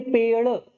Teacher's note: हमारी ऊपर की जो मुख की छत है, दांत के ऊपर वाला जो भाग है उसे हम मूर्धा कहते हैं, तो वहां से उच्चारित होती है और ऊपर झटके से ऊपर जाती है जीभ और झटके से नीचे आ जाती है। जैसे बोल के देखिए पेड़, जब पे बोलेंगे तब जीभ साइलेंट बेचारी बैठी हुई है, पेड़। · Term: उक्षिप्त व्यंजन